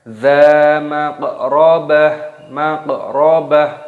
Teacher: qafnya dimatikan dibaca sukun diqalqalah. Maqrabah, ba-nya di sini dibaca, taknya dimatikan diganti dengan huruf H.